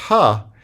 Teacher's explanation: ha is um is a glottal fricative